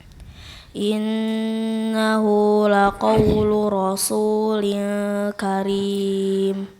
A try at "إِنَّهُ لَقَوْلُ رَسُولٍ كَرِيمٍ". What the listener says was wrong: Coba dilihat, baca inna, jangan telat masuk nunnya, ya. In kalau di slow mo kayak begitu bunyinya. Tapi langsung innahu, langsung masuk nun, ya. Jangan lambat innahu, enggak. Innahu. dipanjangkan gunnahnya.